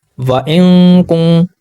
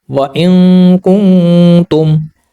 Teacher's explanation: नून की आवाज़ को हम छुपाते हैं नाक के अंदर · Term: इख्फा